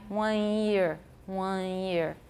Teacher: there's no tongue tip touching the alveolar ridge going straight into the glide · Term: nasalized vowel